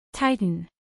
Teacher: Dos sílabas. Titan. Acentuación en la primera sílaba.